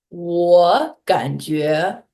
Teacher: two third tones back to back. Your first tone is going to become a second tone